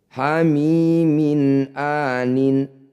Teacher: kasrat tanwin bertemu Hamzah disebut bacaan izhar halq bunyi kasrat tanwinnya baca jelas tidak usah dengung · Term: idhar halki